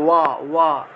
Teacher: অন্তস্থ ব থাকলে ওয়া রূপে উচ্চারণ হবে